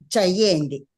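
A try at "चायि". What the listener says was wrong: ఈ యకారము తర్వాత ఈ రావాలి, రెండు రావాలి. చెయ్యి అన్నాం అనుకోండి, మీరు చెయ్యి అన్నారు అనుకోండి, ఇది అయిపోతుంది. చాయి. చాయి అలా. చాయి ఈ రెండు రావాలి.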